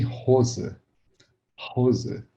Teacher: Vejam que não vibra nada, o som sai mais fácil.